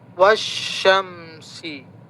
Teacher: ketika dia bertemu dengan alif lam lamnya enggak terbaca langsung wasyamsi. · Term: syamsiyah